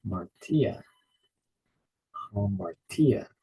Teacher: notice that stress is on the final syllable